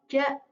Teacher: Ja ini terletak di langit-langit tengah.